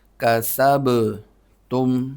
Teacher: سین کو با سے ملانا ہے اور با پہ قلقلہ ہوگا